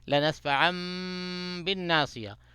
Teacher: پہ نون ساکن کو جو ہے میم میں بدل دیتے ہیں نون کی آواز کو میم میں بدل دیتے ہیں · اقلاب مال غنہ یعنی میم کے اوپر غنہ کریں